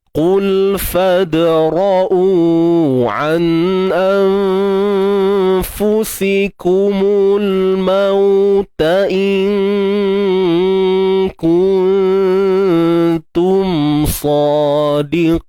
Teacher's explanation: Macam nun mati jumpa dengan kaf, disebut sebagai martabat adna, yang terendah. Sebab apa? Sebab makhraj nun dengan kaf ni jauh.